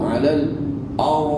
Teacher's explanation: pasal kan bunyi ra tu bunyi penuh mulut